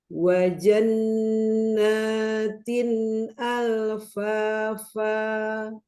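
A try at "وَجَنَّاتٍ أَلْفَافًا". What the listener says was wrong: Ya, suaranya nggak mau ke dalam, suaranya nggak mau naik, suaranya mau dorong ke depan, inhiraf ya. Kanan kiri melenceng.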